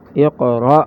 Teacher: جھٹکے میں ہا کی آواز نہیں آئے گی. حمزہ قاف زیر اق را حمزہ زبر را اقرا وقف اقرا.